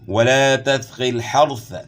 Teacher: را ساکن سے پہلے زبر ہے، تو اس لیے را کو آپ نے موٹا پڑھنا ہے، اور یہاں بھی آپ نے ثا پڑھنی ہے، سین نہیں پڑھنا۔